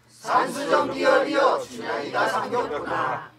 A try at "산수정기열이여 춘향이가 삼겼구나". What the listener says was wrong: 그렇게 하지 말고 말 하나하나 토시들도 잘 깨끗하게 해. 쭈르륵 하지 말어.